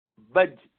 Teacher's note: جیم کے لیے اوپر لگنے کے بعد آواز بالکل بند ہو جاتی ہے